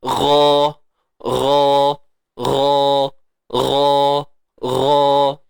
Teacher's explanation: makhraj bagi huruf ghain, hujung kerongkong